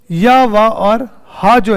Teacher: इन ध्वनियों का उच्चारण करते समय , उच्चारण अंग पूरी तरह से स्पर्श नहीं करते हैं, और सांस अवरुद्ध नहीं होती है। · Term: अर्धस्वर